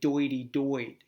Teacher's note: because the TH becomes a D